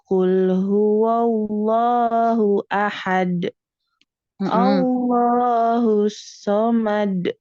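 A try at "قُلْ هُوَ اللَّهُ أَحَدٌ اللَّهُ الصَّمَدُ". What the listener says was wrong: Jangan dijeda ya, jangan ditahan. Ahad, somad, jangan seperti itu ya. Tapi langsung ya, alami. Ahad, somad, langsung ya. Ahad, somad.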